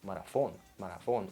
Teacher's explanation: So TH sound, th, changes to F, F sound.